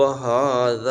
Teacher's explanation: زال بریک پڑھیں گے، ڈھیلا سے پڑھیں گے، ایک ہوتی ہے زا سیٹی والی، یہ ہے زال